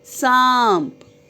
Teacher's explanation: अनुनासिक की आवाज़ आएगी नाक और गले दोनों में से